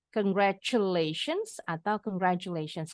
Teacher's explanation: yang ini selalu ada s-nya ya gak boleh ketinggalan s-nya sama boleh bunyinya J boleh bunyinya CH huruf t-nya